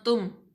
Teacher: कुछ लोग कर जाते हैं तुम, मीम पे गुन्ना बिल्कुल नहीं करना, जाहिर करके पढ़ना है